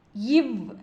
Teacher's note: மேல்வாய் பல்லை கீழ் உதடு பொருந்துவதால் பிறக்கும் மெய்யெழுத்து